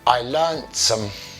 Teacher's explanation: So we'll elide, we take away that t sound when speaking naturally